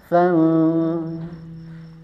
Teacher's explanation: Ketika sa, ujung lidahnya sudah di ujung gigi seri atas. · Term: huruf sa